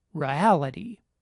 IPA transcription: ɹə.æ.lɪ.ɾi